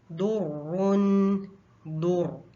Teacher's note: रा पे शद है, इसको थोड़ा सा टाइम देंगे और थोड़ा सा जोर देंगे।